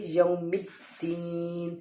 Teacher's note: یا کے بعد جو واو ہے اس کا مطلب ہے کہ یہ واو مدہ کا واو لین کا قاعدہ ہے اور اس کو ہم نرمی سے ادا کریں گے